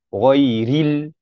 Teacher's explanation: Ril itu hendaklah berbaris bawah dan dinipiskan.